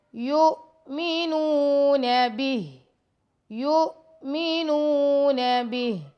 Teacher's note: نون پیش واو نو، یہاں پہ واو مد ہے تو اس کو 2 سیکنڈ تک لمبا کریں گے